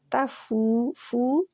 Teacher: فو کو ہونٹ بالکل گول کر لینے ہیں، پیش کے لیے بھی ہونٹ گول ہوتے ہیں، واؤ کے لیے بھی ہونٹ گول ہوتے ہیں. گول ہو کے ہونٹ اتنے گول ہو جائیں کہ ان میں درمیان میں سوراخ رہ جائے.